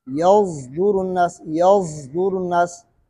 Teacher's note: صفت اطباق اور صفت استعلاء یعنی زا کو پر کر کے پڑھیں گے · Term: اشمام